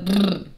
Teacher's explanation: Bilabial literally means two lips. So this requires touching at the very front of your mouth.